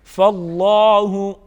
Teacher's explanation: لفظ اللہ کے لام کو پر پڑھا جائے گا، کڑی حرکت ہے، کڑی حرکت کو کڑی حرکت کے مطابق یعنی ایک الف کے برابر کھینچ کے پڑھیں گے.